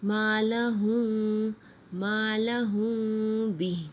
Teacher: جب ہم میم ساکن کے بعد با آ رہا ہے تو یہاں اخفا کے ساتھ ہم غنہ کر رہے ہیں